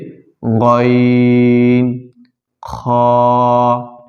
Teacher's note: তিন নং মাখরাজ হলকের শেষ হইতে উচ্চারিত হয়